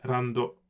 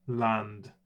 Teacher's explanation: It becomes a row in English, row in Japanese. L's invariably become R sounds in Japanese.